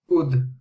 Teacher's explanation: If there's a sakin, then a slight echo is coming out on the dal.